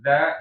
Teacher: Iya. I bertemunya ujung gigi seri dengan ujung ee lidah ya. Maka gesekannya ujung gigi seri sama ujung lidah itu harus ada. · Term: huruf dza